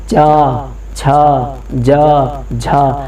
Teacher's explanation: आपकी जीभ आपके तालू पर जाकर लग रही है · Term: तालु ध्वनि